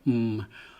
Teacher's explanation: m is a labial labial means lips so I'm touching my lips together